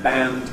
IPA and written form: bænd (banned)